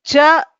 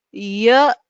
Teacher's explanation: Cha is a complete touch. Ya is a lighter touch.